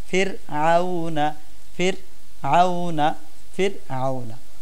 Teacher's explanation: র সাকিন তার পূর্বে জের তো এটাকে আমরা পাতলা করে বলবো